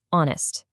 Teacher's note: Notice how the H is completely silent. The very first sound that actually leaves your mouth is an O sound, which is a vowel sound.